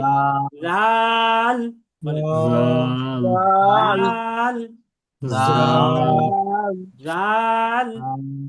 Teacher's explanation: জিহ্বার আগা উপরের দাঁতের আগার সাথে লাগবে